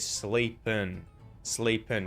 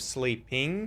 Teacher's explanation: We're going to turn the ing into an un sound instead of an ing sound. So instead of sleeping, he said sleepin', sleepin'. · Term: syllabic N